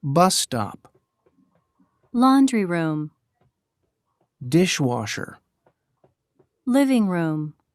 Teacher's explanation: sometimes we put two words together to make a noun the first word is usually stressed